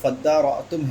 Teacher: فیہ ادغام التام فی الاصل فی الدال، یہاں پر جو فَدَّارَأْتُمْ ہے، تا کا ادغام کیا گیا ہے دال میں، ٹھیک ہے، یعنی جو اصل تا تھی اس اصل تا کا ادغام کیا گیا ہے دال میں